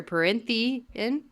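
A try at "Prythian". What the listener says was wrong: You're still adding an N. Prithian. Prithian. You're doing Perinthian. You're doing Pryn.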